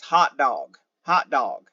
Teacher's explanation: another good example of a glottal stop is hot dog hot dog you're just saying hot hot hot dog you're not